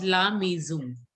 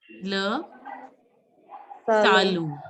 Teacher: Most of you were pronouncing it as la maison. N is not to be pronounced and O nasal sound.